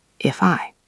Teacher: If ends in F. I is a vowel, so we link.